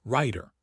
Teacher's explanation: Before a voiceless consonant like T in writer, the vowel is shorter. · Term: vowel length